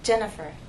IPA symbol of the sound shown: ɚ